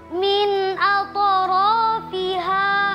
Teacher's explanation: Min atrafiha hukumnya adalah izharu halqi. Karena nun sukun bertemu huruf hamzah dibaca jelas